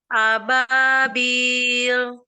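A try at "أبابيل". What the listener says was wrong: Iya, Masya Allah.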